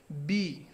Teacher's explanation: দ্বিতীয়টা হচ্ছে ব্যঞ্জন বর্ণ, ব্যঞ্জনা দেবে অর্থাৎ তাড়না দেবে, বাধাপ্রাপ্ত হবে। বি, দেখো আমাদের ওষ্ঠ এবং অধর দুইটা কিন্তু মিলে যাচ্ছে, অর্থাৎ ঠোঁট দুটো মিলে উচ্চারণ হচ্ছে কি বি, এবং ভিতর থেকে একটা বাতাসের চাপ সৃষ্টি করার মাধ্যমে এটি উচ্চারণ হচ্ছে।